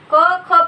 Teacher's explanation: बघा, क ख बघा, हे उच्चारताना खणखणीत आणि त्याला नाद नाही. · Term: आघोष वर्ण